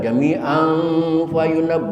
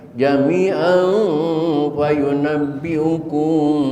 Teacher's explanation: Ada tanwin jami'an, tanwin ketemu fa, ikhfanya ikhfa usad, maka suaranya suara M, bukan suara eng, bukan jami'an fayunab, bukan, dan juga bukan suara n jami'an fayunab, tidak, tapi suara m, jami'an fayunabbiukum.